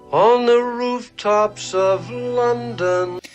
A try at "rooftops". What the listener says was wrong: Tops is a vowel we'll talk about as well. He opened it up, placed it in the back of the mouth, and that's very American. It's inconsistent.